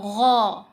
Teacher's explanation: غین، غین گلے سے ادا ہوگا